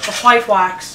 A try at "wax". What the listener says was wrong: Oh, come on, there's no H in that. No, it's wax.